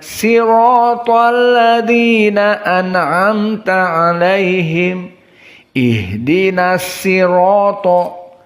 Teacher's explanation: qiraah Ya'qub tidak bisa membaca shod, dibaca dengan sin